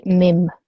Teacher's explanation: I've changed that noon sound into a meme, so mim, okay? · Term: meme makluba